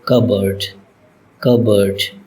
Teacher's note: P is not pronounced in this word.